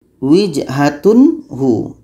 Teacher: Tanwin harus jelas, hu pun harus jelas dan tidak ada dengung di sini.